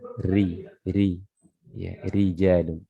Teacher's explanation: Ra-nya berharakat kasrah, ini dibaca tipis, dibaca tarqiq ya, ri. Tidak dibaca ri ya, ri.